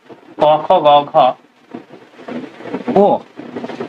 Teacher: এই পাঁচটা উচ্চারণ হয় আমাদের ডিরেক্ট কন্ঠ থেকে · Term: কন্ঠবর্ণ